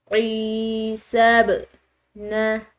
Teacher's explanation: با حروف قلقلہ میں سے آ رہا ہے تو اس با کو ہم نے ہلا کر ادا کرنا ہے